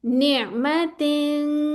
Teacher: तनवीन के बाद हरूफ इखफा में से कोई आ रहा है 15 लेटर्स में से तो यहां पे नून की आवाज को छुपा रहे हैं। अब आपकी जुबान नहीं चिपकेगी ऊपर।